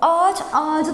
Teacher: Ne oldu Ç sesi C ye dönüştü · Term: ünsüz yumuşaması